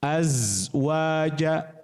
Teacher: Karena huruf za itu punya sifat huruf namanya rokhawah, geser.